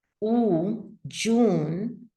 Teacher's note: so June has a tense U